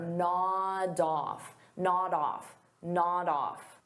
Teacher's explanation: Nod off is a phrasal verb, so we'll pronounce it as one word, nod off. So notice I'll take that D sound and I'll connect it on the off, but I have to combine it together.